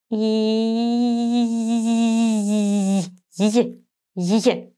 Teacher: We say e and raise the tongue towards the soft palate. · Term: the y sound